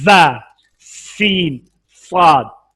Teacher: मखरज number 14 ज़बान की नोक सनाया सुफला और सनाया उलिया के इत्तिसाल से, यानी दांतों को इस तरह बंद करें और दरमियान में ज़बान को लगाएं, ज़ा सीन साद, इनको हरूफ सफीरिया कहते हैं, इसमें सीटी पैदा होती है